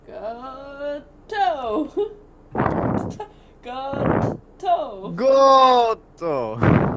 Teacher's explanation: You're gonna have that little rest and then like the double T sound.